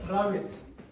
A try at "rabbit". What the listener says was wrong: That's a little better. You exaggerated the R, but it's still better.